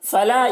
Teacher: الف مدہ ہے، ایک الف کے برابر کھینچ کر پڑھیں گے